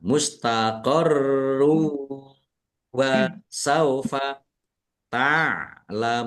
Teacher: bacaan idgham bi gunnah masuk dengan mendengung, yaitu mendengung wawu. Ditandai wawunya ada tasdidnya, ditahan biar tampak mendengungnya.